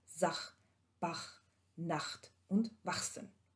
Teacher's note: Im Auslaut und in den Verbindungen mit T, also HT, HS, da wird das H als ein Reibelaut gesprochen.